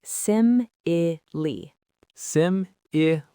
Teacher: Just like hyperbole, that final E makes a long E sound. The first syllable, sim, gets all the stress.